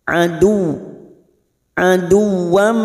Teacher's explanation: Adu masuk pada huruf waw, hanya masuk tanpa ditekan lama-lama. Adu tanpa ditekan, tanpa mendengung karena bukan tanwin